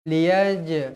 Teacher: Jim ni hukumnya qalqalah sughra. Liyaj mesti dibaca melantun.